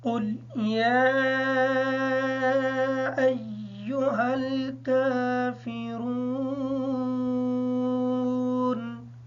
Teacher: قاف کو پر پڑھیں گے، یا کے مد کو مکمل کریں گے، حمزہ کے ساتھ یا کو اچھے طریقے سے ملا کے پڑھیں گے تاکہ یہ شد ادا ہو جائے۔